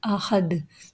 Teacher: We stop at Dal, drop the Duma Tanween, and this Waqf is called Waqf Bil Askan, means the Waqf in which we do Waqf when we drop the Haraka.